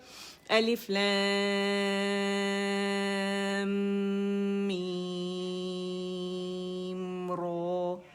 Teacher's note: الف لام میم رو. ٹھیک, را موٹی پڑھی جائے گی.